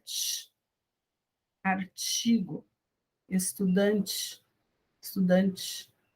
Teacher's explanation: esse tch, ele é o T quando ele está antes da vogal I. A forma que nós, brasileiros, falamos é tch, artigo, estudante, estudante.